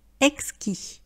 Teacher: vous ne prononcez pas la dernière consonne, il n'y a pas de lettre « e », c'est au masculin, donc on dit exquis.